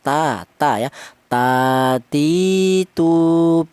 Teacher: keluarnya huruf berasal dari ujung lidah menyentuh pangkal gigi seri atas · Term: huruf ta